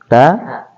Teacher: ujung lidah dengan pangkal gigi seri atas